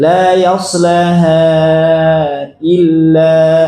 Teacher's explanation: Tetap mad tabi'i, tapi kasusnya ketika waqaf panjang, ketika wasal pendek